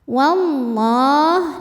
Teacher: lam jalalah dibunyikan secara tafkhim karena didahului harakat fathah